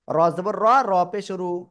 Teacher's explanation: ওকে, এবার এই র অক্ষরটা কোন সময় মোটা হবে আর চিকন হবে, যেহেতু আল্লাহ শব্দ দিলাম আমরা ক্লিয়ার হয়েছি, র অক্ষরও একই, এই জন্য আমি একটু দেখাই দিচ্ছি। র অক্ষরের উপরে জবর অথবা পেশ হলে মোটা আওয়াজে পড়তে হবে